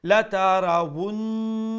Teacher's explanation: the na it should be short, and then the ha would be pronounced one alif long due to the alif madda.